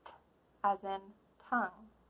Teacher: building up the air in your mouth, stopping it, and then releasing it with your tongue in a puff of breath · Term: true T